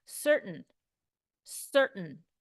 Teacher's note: I don't even really say the T. I don't say the A or the I. I go straight to the N.